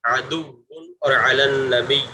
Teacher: جب واو مشدد اور یا مشدد پر وقف کریں تو ذرا سختی سے تشدید کو بڑھانا چاہیے تاکہ تشدید باقی رہے